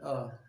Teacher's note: छोटा आ बोलेंगे अ, तो जीभ का मध्य हिस्सा काम करता है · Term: मध्य स्वर